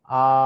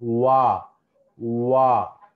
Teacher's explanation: ఇవి కాన్సనెంట్స్ ఎందుకంటే ఓవల్స్ లో ఏమో ఎక్కడ ఏది కదలదు అసలు. చూడండి, ఆ అన్నప్పుడు ఎక్కడ ఏది కదలదు, కానీ వా అన్నప్పుడు పెదాలు మొత్తం కూడా రౌండ్ షేప్ లేక రావాలి, అప్పుడే ఆ సౌండ్ వస్తుంది.